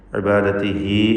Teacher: ഇബാദതിഹി എന്നതിലെ ദീർഘം മദ്ദുസ്സിലത്ത് സൂറ, രണ്ട് ഹറക്കത്തിൻ്റെ അളവിൽ ഹായിനെ ദീർഘിപ്പിക്കുക